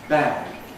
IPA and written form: bæg (bag)